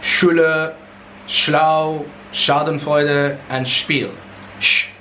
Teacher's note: your blade, what's called the blade of your tongue, comes into contact with something called the palatal alveolar ridge in your mouth